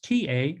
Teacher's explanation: the tongue touches the back of the teeth the tip of the tongue